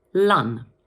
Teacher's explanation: So this one might seem a little bit easy, but a lot of people make the mistake of pronouncing the letter O as an O sound, when in fact, in the first part of the word, the O is pronounced A, like this, lun.